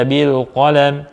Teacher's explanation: dibaca bil qalam, qafnya tebal, lamnya tipis.